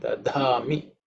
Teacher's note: This is the fourth dha. Fourth letter in the tha varga. So it is aspirated.